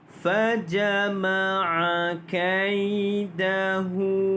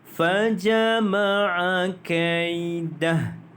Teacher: Hu itu dibaca dengan panjang 2 harakat. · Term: mad silah qasirah